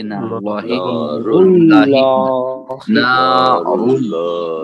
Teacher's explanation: اس میں لام جو ہے لام جلالہ ہے، یعنی موٹا پڑھا جائے گا